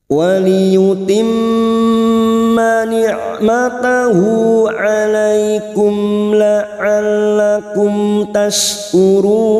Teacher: La'allakum tashkurun huruf shin sukun tafasi tashkurun run bertemu mat dengan huruf hidup yang dibaca wakaf mad arid li sukun 4 harakat kita panjangkan